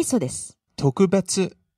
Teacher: you started out low there and went high on the second syllable and stayed high